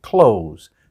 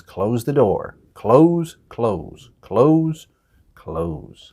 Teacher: native speakers we don't pronounce that th we say it really fast and it sounds like clothes same has closed the door closed